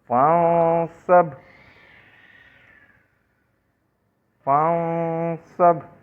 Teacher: فاؤں سب، فاؤں سب، یعنی کہ یہ صاد جو ہے یہ بقیہ 15 الفاظ میں سے ہے، ہم نے نون کو اخفا کیا، غنہ نہیں کیا. فاؤں سب، پوری طریقے سے نون کو ہم نے ادا نہیں کیا، چھپا کے ادا کرنا اخفا کہلاتا ہے